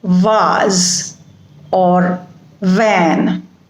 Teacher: which are written with letter v in them have va sound it is a labiodental sound which means that upper teeth will touch the lower lip